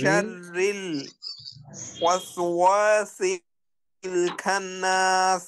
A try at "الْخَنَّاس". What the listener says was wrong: খান্নাস হবে না, খ তো মোটা হরফ। খন,